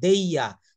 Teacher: দেয়ার বলে না, রটা কিন্তু এটা সাইলেন্ট থাকবে। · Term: ব্রিটিশ প্রোনাউন্সিয়েশনটা